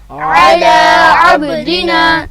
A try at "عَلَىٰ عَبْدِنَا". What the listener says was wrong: یہاں پہ آپ نے کیا کیا کہ اعلیٰ لفظ میں عین کے اوپر زبر ہے اور لام کے اوپر بھی کھڑا زبر ہے، مگر عین کی زبر اور لام کی کھڑا زبر میں آواز میں فرق ہوگا.